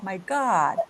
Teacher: A posição da boca é de A, mas o som é de O, my God. Então são sons que misturam o arredondamento do lábio com a posição da língua para fazer o som.